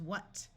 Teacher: wh has the sound of w in most of the United States